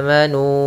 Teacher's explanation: ada huruf mad awalnya amanu dua harakat karena datang setelahnya Hamzah maka dibaca dengan empat harakat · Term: Mad Jaiz munfasil